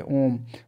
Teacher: ओम और इसको काफी देर तक बोला जाता है